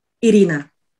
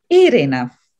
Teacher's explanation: Yes, and if someone pronounces my name with a stress on the second syllable, Irina, for a Latvian person, it may sound as if two words were pronounced, ir and Ina. In Latvian, my name should be pronounced with a stress on the first syllable, Irina. Just like I pronounce it, Irina.